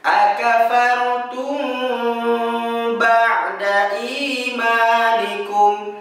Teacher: Pada lafaz akafartum kita tahan suara kita, kemudian kita sebutkan ba-nya. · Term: ikhfa syafawi